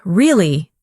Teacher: when you ask a question like really, your voice goes up slightly at the end